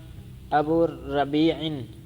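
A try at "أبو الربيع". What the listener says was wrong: ابو الربیع، الف لام نہیں آپ کو ربیع الف پر الف لام، ابو الربیع، ربیع نہیں.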